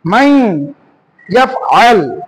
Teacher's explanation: এই নুন সাকিন থাকার কারণে নুনটা বাদ যাবে।